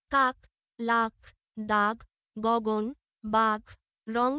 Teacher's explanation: জিহ্বামূলীয় জিভের পেছনের অংশ উঁচু হয়ে আলজিভের মূলের কাছাকাছি নরম তালু স্পর্শ করে জিহ্বামূলীয় ব্যঞ্জন উচ্চারিত হয়।